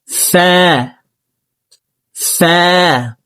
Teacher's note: উপরের দাঁত নিচে ঠোঁটের পেটের সঙ্গে লাগিয়ে ফা হরফকে উচ্চারণ করব।